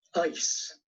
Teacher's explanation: the word ice begins for many speakers with a raised quality closer to the English hesitation vowel so we get ice the conditioning factor again is that final